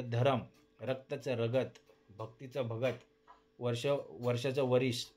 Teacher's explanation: स्वर भक्तीमध्ये जोडाक्षर मध्यभागी फोडले जातात